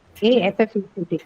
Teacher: The first sound that you hear in affect is also the schwa sound.